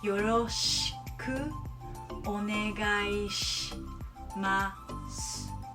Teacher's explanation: you see SHI and SU, you don't want to pronounce a vowel